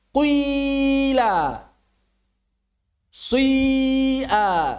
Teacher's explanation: mencampur dhammah dengan kasrah ifrazan, dengan cara memisahkannya.